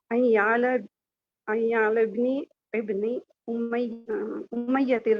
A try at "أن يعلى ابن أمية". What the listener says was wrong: ٹھیک ہے، این یعلا بن امیتا، امیتی نہیں امیتا، باقی ٹھیک ہے ماشاءاللہ، بارک اللہ فیکی۔ جی روبینہ شاہد آپ پڑھیں آگے۔ روبینہ شاہد مائک کھولیں۔